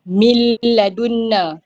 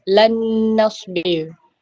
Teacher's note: nun mati bertemu dengan huruf lam. So bunyi lam tu dah masuk dalam nun. Okay, sebab tu dia dengung dan macam syaddah. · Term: idgham ma'al gunnah